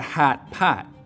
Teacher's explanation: And so what happens is that the lot vowel, which normally lives back here, your tongue cupping low down in the back for an open ah sound, moves forwards towards where trap used to be